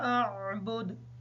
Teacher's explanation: دال کو واضح کریں گے کیونکہ دال حروف قلقلہ میں سے بھی ہے